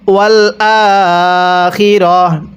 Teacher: ওয়াকফের সময় যেখানে আমরা এরকম গোল তা দেখব, সেই তাটিকে আমরা হা বানিয়ে পড়ব